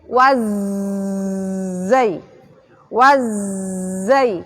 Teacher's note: Kalau zai berarti mengalir terus rokhawah.